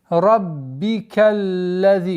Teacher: Удваиваем, а потом на межзубной лази и ударение в размере двух огласовок